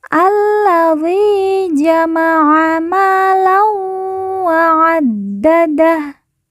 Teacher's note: Dal yang bertasydid langsung ditekan, ditahan 2 harokat.